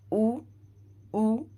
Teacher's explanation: जब उ का उच्चारण होता है तो हमारे होठ गोलाकार हो जाते हैं